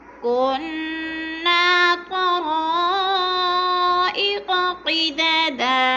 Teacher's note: طرا پہ بھی مد متصل ہے چار الفی مد ہے چار الف کے برابر ہم نے اس کو کھینچ کر پڑھنا ہے